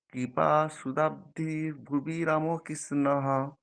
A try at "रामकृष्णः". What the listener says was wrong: রামকৃষ্ণ, রাটা দীর্ঘ, আবার বলুন।